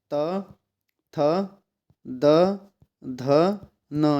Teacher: दंत में आते हैं आपके कौन कौन से, त, थ, द, ध, न, ये दंत में आते हैं।